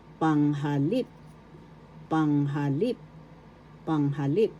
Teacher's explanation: First syllable pang, second syllable ha, third syllable lip. The accent is in the third syllable.